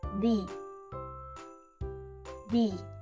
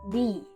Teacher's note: First, we start with the sounds where your tongue gently touches your front teeth, like in the word think. Then, we add a long E sound, like in see.